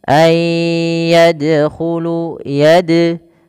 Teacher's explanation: huruf dal di sini adalah bacaan qalqalah yang dimana dalnya harus mantul, tidak dibaca ayyadkhulu.